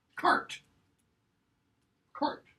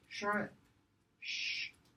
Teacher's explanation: where Anglo-Norman has a k sound, Parisian French has a sh sound.